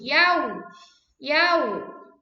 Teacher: Ketika mengucapkan wawu sukun itu wawunya bibir kalian sampai maju.